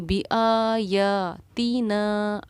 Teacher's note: برابر کھینچنا ہوتا ہے۔ تو بی آ یا تینا، آپ دیکھیے آ یا اور نا پر ایک ہی مقدار میں میری آواز کھینچی ہے، جبکہ تی پر بالکل نہیں کھینچی